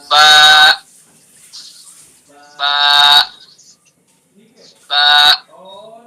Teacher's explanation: اندر والا حصہ وہ تری والا حصہ کہلاتا ہے اور باہر والا حصہ خشکی والا حصہ کہلاتا ہے. تو با کو دونوں ہونٹوں کے تری والے حصے سے ادا کریں گے، اندر والے حصے سے